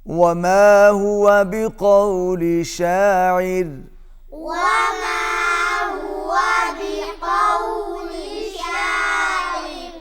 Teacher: باریک، اس لیے کہ وقف سے پہلے عین آ رہی ہے، را سے پہلے عین ہے اور عین کے نیچے زیر ہے، زیر کی وجہ سے را جو ہے وہ باریک ہو جائے گا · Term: را باریک